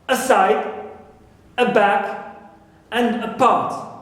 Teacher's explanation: the stress is not on a, but on the original syllables, right, within these words, within their stem